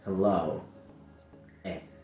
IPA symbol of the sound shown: e